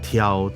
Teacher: 把它那个爆破音的，把那个气音的感觉弄清楚一点，就变成挑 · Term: 送气音